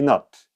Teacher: Така и над не се произнася точно с а, ами с нещо средно между а и о.